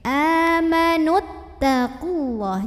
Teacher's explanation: Sehingga terlepaslah huruf sukun yang pertama, huruf mad. Maka kalau wasol, nunnya nggak punya pemanjang, pendek. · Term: mad tabi'inya gugur